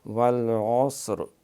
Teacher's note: والعصر اگر ساکن کریں گے تو جب را ساکن ہو جائے گی تو پھر ہم پیچھے صاد ہے، صاد کے بھی ساکن ہے، پھر آگے عین ہے، اس پہ زبر ہے، تو پھر را پر پڑھیں گے تفخیم سے موٹا کر کے